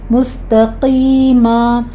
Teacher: مستقیمن ہے، یہاں پہ ہم قوف کو پر پڑھتے ہوئے آگے یا مد ادا کریں گے اور وقف ابدال کر لیں گے۔ مستقیما، تا کے اوپر آپ نے خیال رکھنا ہے کہ تا کو موٹا نہیں کرنا، ٹھیک ہے، تا باریک رکھیے گا۔